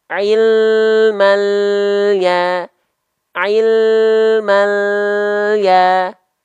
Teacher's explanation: lam sukun jangan sampai memantul ya keluar bunyi vokal E tapi bunyi konsonan l